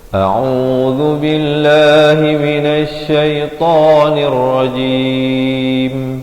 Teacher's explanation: Pastikan kita membaca dengan jelas perbezaan hamzah dan ainnya itu. A dipangkar kerongkong, ain di pertengahan kerongkong, dengan dua harakat, zal di hujung lidah.